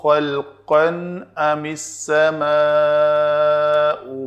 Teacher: خلقاً تنوین ہے، نون تنوین، اس کے بعد حمزہ آ رہا ہے تو اس کو پورا خلقاً پڑھ کے اس کو نون کو اپنے مخرج سے ادا کر کے اس کا اظہار کریں گے